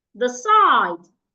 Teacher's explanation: so I'm stressing the second syllable